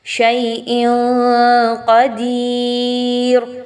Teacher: حمزہ کے نیچے 2 زیر کی تنوین کے بعد کیونکہ قاف ہے تو آپ یہاں پر اخفا کریں گے، آپ یہاں پہ تنوین کی آواز کو ناک میں چھپائیں گے، واضح نہیں پڑھنا۔ شیء قدیر، دال زیر یا دی یا مدہ، اور را پر جو آپ وقف کریں گے تو اس را کو پر پڑھیں گے۔